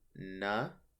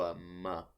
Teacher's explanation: So if it has a P sound, a B sound, or an M sound, because those all use pretty much just your lips, you switch from na, notice when you make a na sound, your lips are not touching, to a m. So these spelling differences are really just how your mouth works.